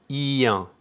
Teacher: So it's not en here, it's un, and it's actually the sound I followed by un. So it's a diphthong, ien, un. For IN, you will see EOW on the screen.